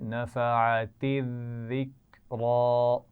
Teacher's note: ذال کے اوپر شد ہے تو یہ خیال رکھیے کہ اس کی آواز میں سیٹی نہیں آنی چاہیے